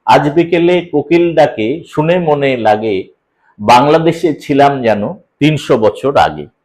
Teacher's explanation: দ্রুত পড়ার কারণে মুক্তদল এবং রুদ্ধদল সমভাবে উচ্চারিত হচ্ছে সমান সমান সময় নিয়ে উচ্চারিত হচ্ছে অর্থাৎ এক একটা দল উচ্চারণ করতে প্রায় মুক্তদলে যে সময় লাগছে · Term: শ্বাসাঘাত